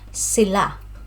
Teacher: So pronunciation, sila is on the second syllable, sila.